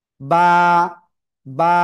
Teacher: দেখেন, এই যে দুই ঠোঁট, প্লিজ প্লিজ প্লিজ, দুই ঠোঁটের ভিজা অংশ থেকে অক্ষরটা উচ্চারণ হবে।